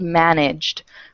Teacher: it ends with e but the E is silent right so the sound at the end of manage is that G and G is voiced so since it's voiced managed ends with a hard D sound